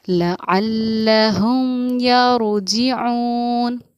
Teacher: میم کو سمپل ظاہر کر کے پڑھیں گے، جیسے اردو میں ہم اور تم کی میم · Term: اظہار شفوی